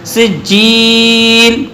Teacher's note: سجیل کھینچ کے طول کر کے پڑھ سکتے ہیں، سجیل توسط سے پڑھ سکتے ہیں، اور سجیل قصر کے ساتھ بھی پڑھ سکتے ہیں.